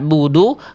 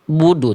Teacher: Suaranya berada di tengah-tengah antara mengalir dan tertahan. Jadi sedikit mengalir, nggak sampai betul-betul putus. · bedakan antara ain di sini suaranya sedikit mengalir, budu. Kalau hamzah di bawah, budu, terputus.